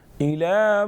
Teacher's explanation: إلى کھڑی حرکت ایک الف کے برابر کھینچیں گے